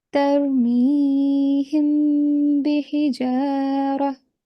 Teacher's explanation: Okay, so when the next word after the next letter after mim sakin is a ba, then we have to make an ikhfa, that is a concealed nasal sound of mim for 2 seconds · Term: labial concealment